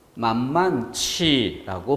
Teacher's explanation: 자, 그때 그렇게 축약될 수 있는 조건에서 하에 아가 줄고 히읗만 남아서 이것이 축약이 된다 이런 뜻인데, 만만하지에서 하에 아가 줄고 히읗이 뒤에 있었던 지읒하고 축약이 되는 거예요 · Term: 거센 소리